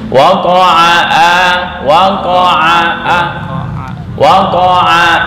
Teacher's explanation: Ain itu di tengah tenggorokan, enggak masuk ke hidung ya.